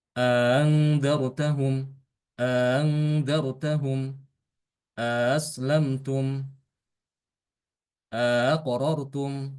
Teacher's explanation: Yang pertama adalah idkhol dengan tashil. Memasukkan alif di antara kedua hamzah tersebut, ya, kemudian hamzah yang kedua dibaca dengan tashil